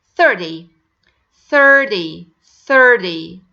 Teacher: don't make it Heavy D guys make it very light D instead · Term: flappity, flapped T